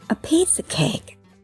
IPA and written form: ə piːsə keɪk (a piece of cake)